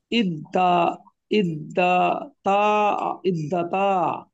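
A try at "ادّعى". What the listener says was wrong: এবার এই দালটা, সরি তাটা দাল হয়ে যাবে এবং পাশাপাশি দুইটা দাল। ইদ্দা, ইদ্দা।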